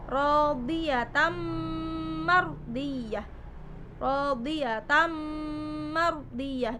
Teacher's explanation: Karena di situ ta berharokat tanwin atau fathaten bertemu dengan huruf mim. Tanwin bertemu dengan huruf mim termasuk dalam hukum bacaan idgham bi gunnah, yaitu harus dibaca dengung, memasukkan dengan dengung. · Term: Idgham Bighunnah